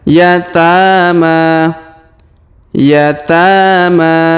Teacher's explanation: bengkok atau Alif maksurah di depannya F F kemudian yatama yatama huruf ta kita panjangkan dua harakat